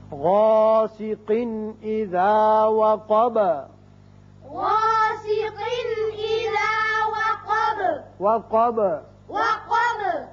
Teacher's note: با بھی حروف قلقلہ میں سے ہے، اس کی صفت قلقلہ ادا کریں گے